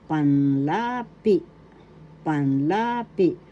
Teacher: Second syllable is the accent.